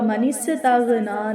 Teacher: یذکر فتنفعہ الذکرى، میم کے اوپر غنہ ہوگا، اما من استغنا، سین کو سیٹی کے ساتھ ادا کریں گے لیکن اس پر کلکلہ نہیں ہوگا